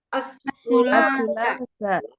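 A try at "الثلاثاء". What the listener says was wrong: Taknya panjang. As-sulasa. Gitu.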